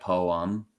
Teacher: American English is kind of like lazy okay so the e the letter e becomes like basically a schwa sound like poem